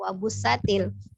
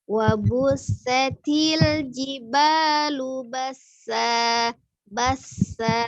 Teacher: Ada safirnya di huruf sinnya ya. Ada sifat hamas juga, jadi dialirkan. Ada nafas yang keluar ketika mengucapkan huruf sin.